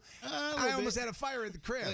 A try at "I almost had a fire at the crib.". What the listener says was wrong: You can't like put the emphasis on it like that, but yeah, just let it roll off.